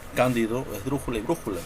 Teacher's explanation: la mayor fuerza de voz recae en la antepenúltima sílaba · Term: palabra esdrújula